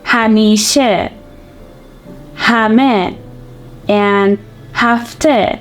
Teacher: in the final position of a word, it can have the e sound, not the he sound